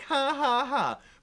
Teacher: in most accents the J is pronounced like a wimpy little H